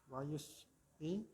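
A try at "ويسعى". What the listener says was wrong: Itu kan enggak yaknya enggak ada titik duanya ya. Berarti bacanya apa? Wayas'a.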